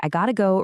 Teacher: Feel how your tongue just quickly taps or flaps against the roof of your mouth.